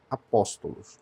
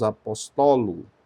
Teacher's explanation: É uma palavra que é acentuada na antepenúltima.